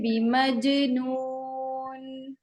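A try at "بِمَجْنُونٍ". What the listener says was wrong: वाजे नहीं हुआ अभी भी नून.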